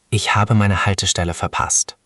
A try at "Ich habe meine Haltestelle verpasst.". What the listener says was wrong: That sounded genuinely panicked. Nice.